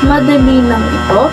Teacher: nagtatanong madali ng ito sa halimbawang ito ang tono of peach ay taas ng dulo sa pangungusap